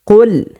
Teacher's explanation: 4 নম্বর মাখরাজ হচ্ছে জিহ্বার গোড়া তার বরাবর উপরে তালুর সঙ্গে লাগাইয়া 2 নুক্তাওয়ালা কফ